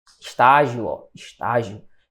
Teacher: há um encontro entre duas vogais no final desta minha palavra. E, neste encontro, as vogais não ficam separadas, certo? Hiato. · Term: ditongo